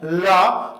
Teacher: ला का उच्चारण करते समय जीभ बीच में खड़ी होती है और उसके बगल से श्वास वायु बाहर निकलती है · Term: पार्श्व व्यंजन